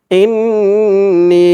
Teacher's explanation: ইন গুন্না করতে হবে নি এক আলিফ টান দিতে হবে